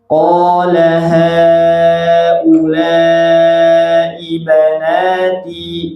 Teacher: Natinya tetap 2 harokat ya, meskipun ada tanda panjang, karena itu di depannya ada hamzah, cuma enggak terbawa ya, enggak terbawa karena 2 kata. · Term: mad munfasil